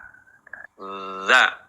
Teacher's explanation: ada sifat rokhowah. Nah, mengalirnya suara.